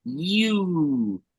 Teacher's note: it starts as a smile, ends with the round sound